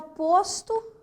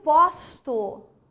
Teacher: o meu o é fechado o timbre é fechado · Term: timbre fechado